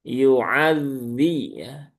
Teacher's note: Zal yang bertasydid, zal itu punya sifat salah satunya adalah rokhawah, ya, rokhawah. Maka ketika dia bertasydid, ya tunaikan rokhawahnya ya.